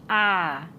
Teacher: इसके उच्चारण में मुंह पूरा खुलता है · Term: विवृत स्वर